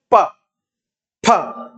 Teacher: ओष्ठ दोनों मिलके प्राणवायु, हवा यानी प्राणवायु को मुख के अंदर रोकेंगे, फिर उसके बाद ओष्ठ एकदम से खुलेंगे, उसके बाद आपके क्या होगा, प वर्ग का उच्चारण होगा। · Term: ओष्ठ व्यंजन